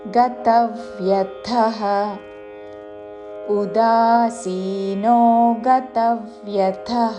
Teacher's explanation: తా మీద ఆఘాత చివరిలో మహాప్రాణాక్షము థ. గతవ్యథః గతవ్యథః కాదు, అల్పప్రాణతో గతవ్యథః అని కూడా కాదు.